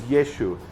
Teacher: So Yehoshua became Yeshua. And then Yeshua became Yeshu because they couldn't pronounce the Ain